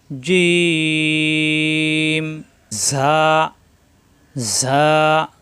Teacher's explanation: জিম জিব্বার মাঝখানে উপরে তালতে লাগবে